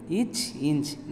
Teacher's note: நாவின் இடையானது அன்னத்தின் இடையில் பொருந்துவதால் தோன்றுகிறது.